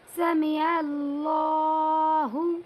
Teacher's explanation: اللہ کے لام کو پر پڑھیں گے کیونکہ اللہ کے لام سے پہلے عین کے اوپر زبر آیا ہوا ہے